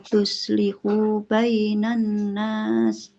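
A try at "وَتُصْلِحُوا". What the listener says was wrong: Watattaqu wa tuslihu. Nah, huruf shotnya harus tebal. Karena shotnya kalau tipis nanti jadi sin. Watattaqu wa tuslihu.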